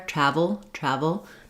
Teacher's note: because the first syllable is stressed the second syllable is shorter and reduced · the first syllable is stressed. The second syllable is shorter and reduced with more of the vul sound. Then when we're switching over to looking at the word trouble, what we want to notice there is that we have, instead of the a vowel, now we have the stressed schwa, the sound. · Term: syllabic L